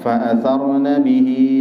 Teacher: di situ ada Mad Silah qasirah dua harakat ha kasrah itu dibaca Dua harakat